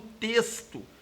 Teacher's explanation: Se você é da região do sul de Minas, por exemplo, você tende a pronunciar a palavra como texto, e aí você vai ter um som S.